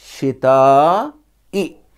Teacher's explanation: یہاں مد متصل ہوگا چونکہ الف مدہ کے بعد حمزہ اسی کلمے میں، اسی ورڈ میں، اسی لفظ میں آیا ہے، تو اس وقت مد متصل ہوگا، اسے 2 الف یا 3 الف کے برابر کھینچیں گے۔